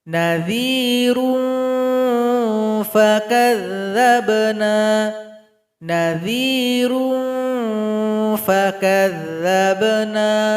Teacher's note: ikhfa awsat, jadi harus seimbang bunyi dengungan dan bunyi sama-samar. Jadi ikhfanya mengarah kepada huruf fa.